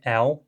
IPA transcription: ɛw